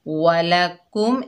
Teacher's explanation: काफ के ऊपर पेश, आगे मीम साकिन है, काफ को मीम से मिलाकर पढ़ेंगे और फिर मीम का इजहार हो रहा है। वालाकुम, इजहार शफवी का कायदा है।